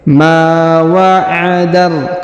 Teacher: huruf ma dibaca 2 harokat ya karena di depannya terdapat alif